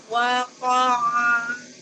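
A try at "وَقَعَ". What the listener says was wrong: Wa saja yang wa boleh dimonyongkan wa, tapi ko-nya tidak boleh ya, tidak wako aja. Ko-nya dibuka lagi ya. Ini dari awal sudah dibuka.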